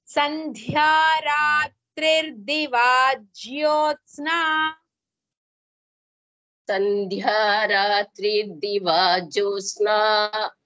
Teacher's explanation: Here sandhya dha is mahaprana. With dha mahaprana ya letter is there.